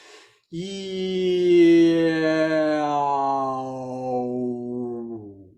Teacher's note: So the vowels at the front, if you do that, you go from E-O and just let your lips round out as you go.